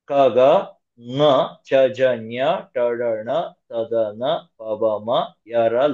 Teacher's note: ಅಲ್ಪಪ್ರಾಣ ಅಕ್ಷರಗಳು ಅಂದ್ರೆ less breath ಉಪಯೋಗಿಸಿ ಹೇಳುವ ಅಕ್ಷರಗಳನ್ನ